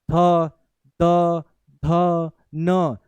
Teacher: त थ द ध न दंत से बोला जाएगा, दांत से।